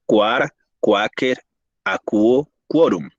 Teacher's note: este grupo de letras precede con un sonido oclusivo, velar, sordo, a las vocales A y O